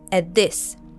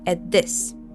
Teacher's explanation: the T from at merges into the sound from this. At this. So we don't fully pronounce the T sound. At this. And the whole phrase sounds like, take a look at this guy.